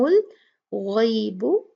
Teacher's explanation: یہاں پر غین بھاری ہے اس کو موٹا پڑا جائے گا اور یہ لین ہے